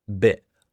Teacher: I don't really say the T at the end. That's partly because of where I'm from in England, in the southeast.